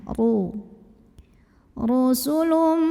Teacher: Ro-nya dibunyikan secara tafkhim karena ro-nya berbaris dhammah. Maka bacanya tebal, pangkal lidah naikkan.